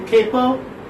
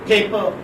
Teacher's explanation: First pa is aspirated and second pa is not.